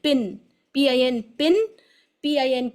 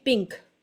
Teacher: by touching your tongue tip to the hard پیلٹ، مطلب زبان کی نوک کو بالکل کلیئر لگانا ہے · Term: کلیئر نون